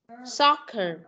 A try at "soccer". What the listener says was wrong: Không có phải là sock mà là soccer.